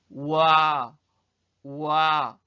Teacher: 오 모양을 먼저 우리가 만든 다음에 그 다음에 아 모양으로 우리 입 모양이 바뀌는 걸 느낄 수 있을 거예요